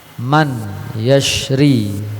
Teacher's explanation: man yashri dibaca may ma'al gunnah menjadi may ya